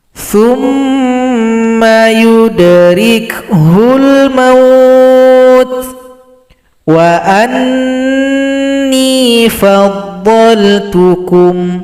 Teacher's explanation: Ini langsung didengungkan, otomatis dengung. Dengungnya kira-kira 2 ketukan.